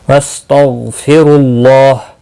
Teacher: غین مستعلیہ ہے، پر پڑھا جائے گا، اس کو ہلانا نہیں۔ را پیش کی وجہ سے پر پڑھا جائے گا۔